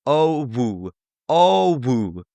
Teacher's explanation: O kind of has two parts in it. There's the O sound and then there's the woo sound.